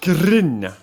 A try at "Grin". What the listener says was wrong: You gotta roll the R, you're not pronouncing it correctly.